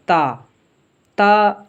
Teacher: ता ये जबान की नॉक और ऊपर के दांतों की जादौन से अदा होता है · नॉक और ऊपर के दांतों की जादौन से अदा होता है हमने जबान की नॉक को ऊपर वाले दांतों की जादौन में थोड़ा सा जोर देकर अदा करना है